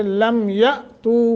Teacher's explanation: حمزہ ساکن ہے جھٹکا دے کے پڑھیں گے